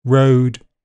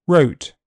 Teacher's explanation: O is a long sound, so it will be shortened before voiceless consonants. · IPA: /əʊ/